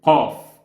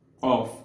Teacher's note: So you hold the air a little bit and then you shoot it with force. You force the air out.